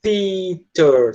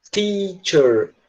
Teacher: Teatro, presta atenção que tem um som de um TH no começo. Esse som do TH é um som difícil porque é aquele som que eu sempre ensino para vocês, né? Que é com a língua entre os dentes.